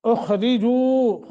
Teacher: معروف پڑھنا ہے، الذین دال کا مخرج ادا کرتے ہوئے، اخرجوا خا موٹا را باریک پڑھنی ہے · اخرجوا خا موٹا را باریک پڑھنی ہے، جو حروف مدہ ہے، واو ساکن ما قبل زمہ ہے، اس کو 1 سیکنڈ کی مد کر کے پڑھیں گے